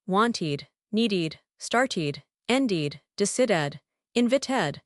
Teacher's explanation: All of these end in t or d sounds. So they get the vip treatment, they get an extra syllable.